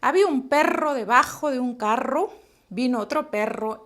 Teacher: el sonido vibrante múltiplo múltiple se produce en los alveolos recuerde no es como el sonido de la r de ustedes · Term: vibrante múltiple, sonido vibrante múltiple